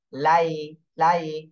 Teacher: জি, তাহলে এটা কিন্তু ওয়াও এর সময় ঠোঁট গোল হয়ে যাবে, আর ইয়ার সময় ঠোঁট গোল হবে না, ঠোঁটটা ছড়ানোই থাকবে